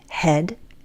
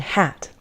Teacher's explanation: with both sounds, the front part of the tongue is the highest part of our tongue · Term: front vowels